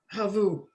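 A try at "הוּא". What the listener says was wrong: No, just who. You only pronounce the V sound as a V if there's vowels underneath it. If there's a dot in the middle of it, it's just an oo. If there's a dot over it, it's just an O, usually.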